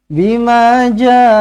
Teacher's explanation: mad wajib muttasil di sini. Okey, 4 ataupun 5 harakat. Ada ombak rindu bertemu dengan hamzah dalam satu kalimah.